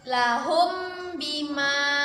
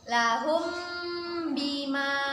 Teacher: Ikhfa artinya samar-samar, maka kita baca samar-samar 2 harokat. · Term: ikhfa syafawi